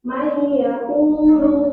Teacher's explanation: Nah, di situ ada huruf nun sukun bertemu dengan ya, maka nun sukunnya dilewati dan siap-siap masuk ke huruf selanjutnya, yaitu huruf ya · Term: idgham biguna